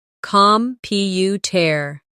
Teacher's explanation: The stress is on the second syllable, computer. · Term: word stress